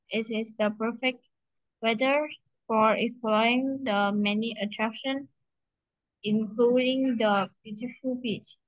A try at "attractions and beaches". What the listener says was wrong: Attractions and beaches. You have to say the S, okay?